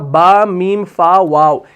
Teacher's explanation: बा, मीम, फा, वाव, ये ऐसे हरूफ हैं जो होंठों से अदा होते हैं। बा, मीम, फा और वाव, यानी ये जो 4 हरूफ आप देख रहे हैं ना, इनकी अदायगी होंठों से है। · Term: हुरूफ शफविया